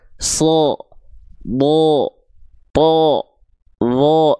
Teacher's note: Kalau dia termasuk ke dalam huruf yang tebal, karakter tebal, karakter vokalnya akan seperti O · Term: huruf-huruf tebal